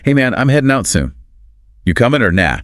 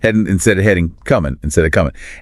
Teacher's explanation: She highlights the dropped consonants, specifically the G's.